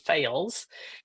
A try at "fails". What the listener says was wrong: The first problem is you're mispronouncing fails. It's fells. That's the way Derek says it.